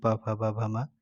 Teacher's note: तो प वर्ग का उच्चारण स्थान ओष्ठ हो जाएगा